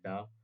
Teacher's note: मूर्धन्य अल्पप्राण घोष व्यंजन वर्ण का उदाहरण है